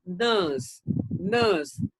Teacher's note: in british we don't pronounce the letter r